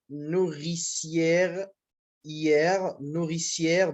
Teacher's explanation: À l'inverse de la diérèse, la synnérèse signifie en grec resserrement, et la réunion en une seule syllabe de ces deux voyelles qui se succèdent dans un mot